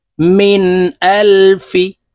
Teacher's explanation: নুন জের মিন নুন সাকিনের পরে ইজহারের হরফ হামজাহ আসছে তাই এই নুনকে গুন্নাহ ছাড়া স্পষ্ট করিয়া পড়বো